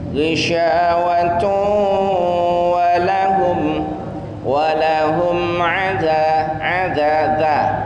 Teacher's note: suaranya di hidung. Kenapa? Karena dia idgham bi gunnah.